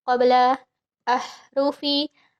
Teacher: ha itu bersih sama sekali tidak ada ngorok.